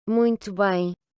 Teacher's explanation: le U qui va se prononcer OU et le O final qui va se prononcer OU également